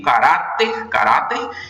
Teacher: No caso, se eu for levar em conta a regra, a palavra caráter é uma palavra paroxítona. Veja que a sílaba mais forte é a do meio, caráter, caráter, e ela termina em R.